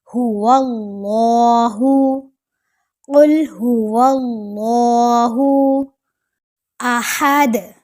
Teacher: ہا حلق کے درمیان سے اور دال پر کلکلا کریں گے